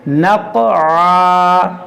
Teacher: یہ قاف میں قلقلہ کریں گے اور اس کو موٹا بھی کریں گے